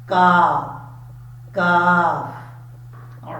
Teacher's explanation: اس کاف کا مخرج ہے زبان کی جڑ اوپر والے تالو کے سخت حصے سے لگے تو کاف پڑھا جاتا ہے